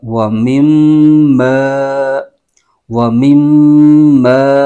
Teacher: मीम मुद्दत में हमेशा गुन्ना होता है तो यहां पर गुन्ना करेंगे